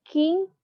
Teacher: The back part of our tongue is going up and touching the soft palate is velar.